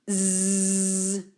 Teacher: D'altra banda, aquest fonema Z sona com l'anterior, però el produïm fent vibrar les cordes vocals, com si es tractara del vol d'una mosca. És la S sonora.